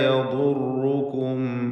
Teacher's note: ദ്വാദ് ഇസ്തിഅലാഇൻ്റെ 7 അക്ഷരങ്ങളിൽ പെട്ടതാണ്. തഫ്ഖീം ചെയ്യണം, തടിപ്പിക്കണം.